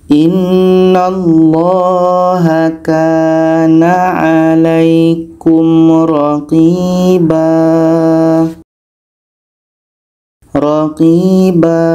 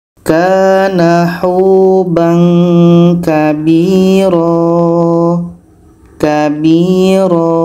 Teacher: Akhirnya kita ganti menjadi panjang alif.